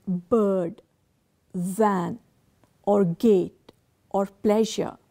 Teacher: When we utter the word bird, van, or gate, or pleasure, the vocal cord vibrate when we use the consonant. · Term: voiced consonants